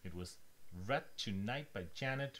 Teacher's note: a fall means that it's just a statement